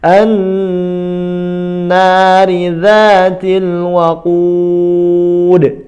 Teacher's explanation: Naridza, na-nya panjang, ridza, za-nya juga panjang 2 harakat.